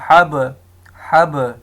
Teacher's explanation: اب ان میں قلقلہ تب ہوگا جب یہ ساکن ہوگا۔ اب یہ با ہے، لیٹر آف قلقلہ ہے، یہ ساکن آ رہا ہے تو اس پہ قلقلہ ہوگا